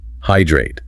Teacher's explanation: It has two syllables, hydrate. The emphasis is on the first syllable.